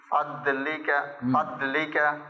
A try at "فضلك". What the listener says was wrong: ফদ মোটা হবে ضاد হুরুফে মুস্তালিয়া فضلك